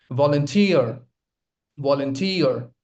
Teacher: The stress lies on the third syllable.